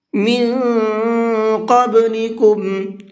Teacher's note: قاف اخفا کے حرفوں میں سے ہے، تو یہاں نون کے اندر اخفا کر کے پڑھیں گے اور ساتھ ساتھ قاف کو پر کر کے بھی پڑھیں گے۔